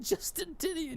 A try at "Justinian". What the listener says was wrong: It's Justinian. There's no T there.